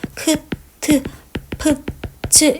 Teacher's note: 히읗이 기역이나 디귿이나 비읍이나 지읒 이런 것들과 같이 오면 크, 트, 프, 츠 이렇게 거센소리화 되잖아요